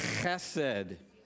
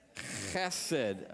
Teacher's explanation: It's a guttural, so do not say hesed. Okay? If you don't spit on the person in front of you, you've said it wrong.